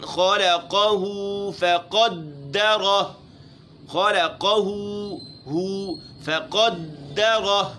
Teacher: فقدرہ قاف موٹا ہے، را بھی موٹی پڑھنی ہے